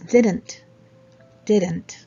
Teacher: let's not put any vowel sound between n and t